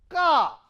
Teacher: If I want to produce the ka, during the ko, the back of the tongue touches the velar position, okay, and it is totally closed, cavity is totally closed. Then suddenly it has to be burst.